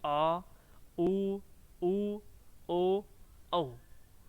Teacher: पश्च जो स्वर होते हैं जीभ का जो पिछला भाग है वो काम करता है इनके उच्चारण में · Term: पश्च स्वर